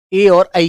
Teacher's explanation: कंठ प्लस तालु के मेल से मेरे बच्चों ए और ऐ की आवाज निकलती है।